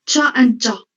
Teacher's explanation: we have ch and j, both of which begin with a stop, which is immediately followed by a fricative sound. So a j sound has the phonetic symbol da, which is a stop, followed immediately by ja, as in measure. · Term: affricate sound